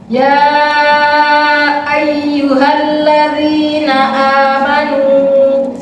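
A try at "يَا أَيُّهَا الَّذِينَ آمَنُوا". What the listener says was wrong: Ya ayyuhalladzina, seperti ada jeda lagi.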